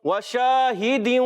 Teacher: شین کی ادائیگی خاص خیال رکھنا ہے, تفشی کے ساتھ منہ میں آواز پھیل جائے اچھے طریقے سے